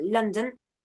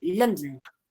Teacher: Un poco sacando la schwa de ahí y no pronunciándola. Entonces, lo que hubiera sido el núcleo, que sería la schwa por ser vocal, pasa a ser la alveolar nasal que le sigue